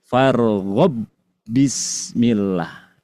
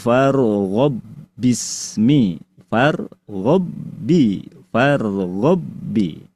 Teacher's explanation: ba yang pertama diidgamkan, dimasukkan melebur menyatu dengan ba yang kedua. dalam ilmu tajwid dikenal dengan karena ini hurufnya sama tempat keluarnya dinamai dengan irgam mutamain. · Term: idgham